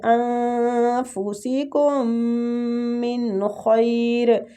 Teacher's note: میم مشدد ہے، میم مشدد کا غنہ کرنا ہے اور نون کا ادھر اظہار کرنا ہے، ٹھیک۔ نون کا اظہار